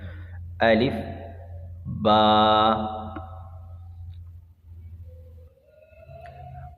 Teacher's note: جب دونوں ہونٹوں کا اندرونی یعنی تری والا گیلا حصہ مل جائے تو اس سے با ادا ہوگا